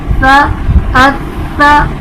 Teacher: بغیر سختی اور بغیر سیٹی کے ادا ہوگا. اس میں سختی اور سیٹی نہیں آئے گی. جب زبان کا کنارہ اوپر کے دانتوں کے اندرونی کنارے سے لگتا ہے تو ہمارا حرف تا ادا ہوتا ہے.